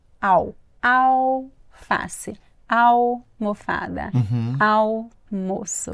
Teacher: Mas a pronúncia, gente, não tem som de L.